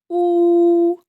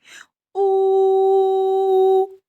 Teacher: його у звук утворюється за допомогою голосу тому звук у голосний коли ми його вимовляємо губи витягнуті вперед трубочкою звук проходить вільно без перепон ніяких шумів не чути